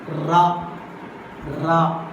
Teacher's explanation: a number of rapid taps are made by the tip of the tongue against the teeth ridge · Tip of the tongue touching with the teeth ridge number of times to produce ra sound. That's why here rapid taps are made by the tip of the tongue. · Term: roll